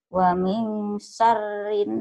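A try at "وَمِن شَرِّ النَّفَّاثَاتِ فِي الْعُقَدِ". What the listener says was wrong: Bukan sarin. Wa min syar, R-nya kayak ditahan.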